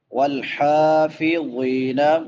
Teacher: حا چھوٹی حا ہے، حلق سے ادا ہوتی ہے